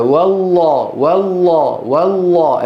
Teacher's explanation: تفخيمها إن جاورت حرف المفخم، يعني هنا في لفظ الجلالة والله والله والله، الواو إيه؟ مرققة، واللام مفخمة